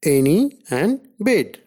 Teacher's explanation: A is a front unrounded vowel between half close and half open. A occurs only initially and medially in a word like any and bid.